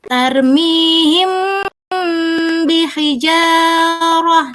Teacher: samar antara huruf mim dan huruf ba pada bibir, kemudian ditahan kira-kira 2 harokat seraya mengeluarkan suara ikhfa atau samar ya dari pangkal hidung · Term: ikhfa syafawi